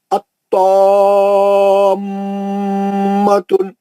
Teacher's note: 2 मीम मिला के मुशद्दद कर दिए, गुन्ना हो गया। 6 हरकत से पढ़ेंगे।